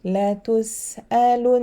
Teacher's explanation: you have to spread the sound of the ghunna longer at the end